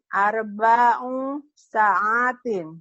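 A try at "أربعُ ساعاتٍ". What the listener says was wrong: Iya, sa'atin. Hanya panjang.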